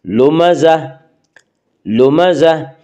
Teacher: گول تا کے اوپر جب ہم وقف کرتے ہیں تو گول تا وقف کرنے کی صورت میں ہائے ساکنہ بن جاتی ہے